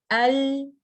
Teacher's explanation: while saying the makraj of letter lam like this al i'll the tip of the tongue is touching the roof of the mouth and this touching is blocking the sound to escape from the front that's why the sound deviate and escape from the sides instead